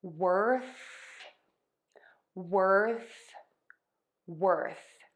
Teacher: you're going to stick your tongue out of your mouth your tongue is not going to touch your front teeth and the air is going to continue to move out your voice box is off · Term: th sound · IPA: /wɜrθ/